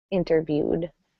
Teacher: the ed ending gets a D sound, but not an extra syllable